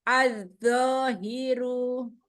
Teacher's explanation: Zo, keluarkan ujung lidah, gesekkan zo.